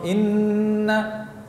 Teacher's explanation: adapun ketika bertasydid nunnya masih ada. Posisi lidah masih pada makhraj huruf nun. Inna. Karena itu gunnahnya lebih sedikit kadarnya karena tercampur dengan bagian mulut, dengan lidah yang ada yang bertemu dengan ujung langit, begitu pula dengan bibir yang saling bertemu.